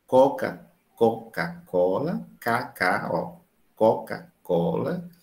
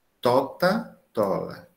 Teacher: em vez de dizer uma velar, que é mais difícil, ela diz uma língua dental